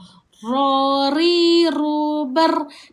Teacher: Kedudukannya adalah hujung lidah kita berada di antara langit dan gigi atas. Kat langit belakang gigi atas kita sebut huruf ra.